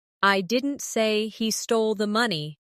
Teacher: In the second one, the stress is on stole